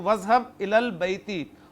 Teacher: हमज़ातुल वस्ल इज़हब का पीछे से मिलाकर पढ़ा